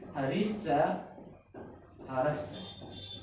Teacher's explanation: इस विसर्ग के स्थान पर तालव्य सकार का प्रयोग किया हुआ होता है। तालव्य सकार का प्रयोग यहाँ पर होता है वो होता है विसर्ग संधि के अनुसार।